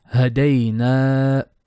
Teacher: day is short and na is long, 2 beats.